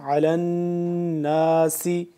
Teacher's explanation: عین کو حلق کے درمیان والے حصے سے اور کھچاؤ پیدا کر کے کریں گے ، کھچاؤ پیدا کر کے اس کو پڑھیں گے، ٹھیک ہے.